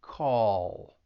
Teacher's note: when you say call, the tongue is going to come up to the top part of your mouth at the end of the word because it's a dark L, and you'd hear that ul sound at the end, call.